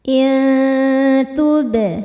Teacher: Cara baca nun sukunnya adalah samar-samar, siap-siap menuju makhraj huruf ta disertai dengung. Dengungnya sedikit, samarnya banyak karena ta makhrajnya masih dekat dengan nun. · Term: ikhfa hakiki